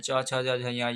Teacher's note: ये सब है जो तालु से उच्चारण होता है। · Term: च वर्ग